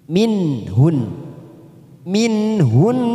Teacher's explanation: huruf nun sukun bertemu dengan ha tidak ada warnanya, namanya bacaan idhar halki. Kita baca jelas tanpa mendengung.